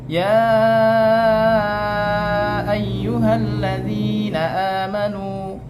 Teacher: Kalau tadi ya ayyuhallazina amanu, mad jaiz itu menyebutnya 2,5 alif